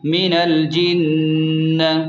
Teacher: نون پر شد ہے تو نون پر غنہ کریں گے، یعنی غنہ کے ساتھ پڑھیں گے